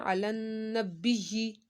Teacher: यहाँ पर नून साकिन है, नून के ऊपर आपने गुन्ना करना है।